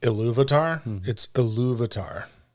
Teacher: you can try to emphasize the second syllable